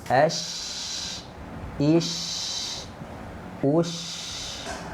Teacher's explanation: Oke, sekarang kita sukunkan ya. Sukunkan berarti dia mengalir, tidak boleh memantul.